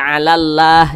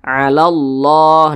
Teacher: kalimat Allah dibaca tebal, dibaca tabkhim.